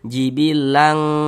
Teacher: Jadi bunyi tanwinnya kita baca samar. Jangan dibaca jibilan berbunyi n jelas begitu, jangan. Kita samarkan. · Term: ikhfa hakiki